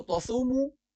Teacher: تصومو صاد موٹی پڑی جائے گی، واو کو تھوڑا کھینچا جائے گا